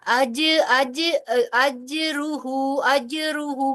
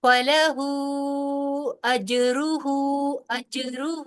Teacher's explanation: أَجْرُهُ جیم پہ تھوڑا سا جھٹکا دیں گی